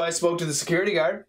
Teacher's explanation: So we got three schwas in a row.